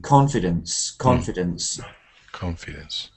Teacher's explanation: confidence is with a big stress at the beginning